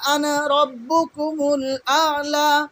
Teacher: আনা এইখানে টান হবে না, সেই চিহ্ন এখানে আমরা দেখতে পাচ্ছি, আলিফের উপরে গোল করা আছে, মানে টান জিরো, টান হবে না, এটা বোঝা যাচ্ছে।